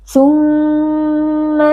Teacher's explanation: Mim tasydid wajib berdengung.